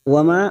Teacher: Wa ma ada fathah yang diikuti alif 2 harokat kita panjangkan mad tabi'i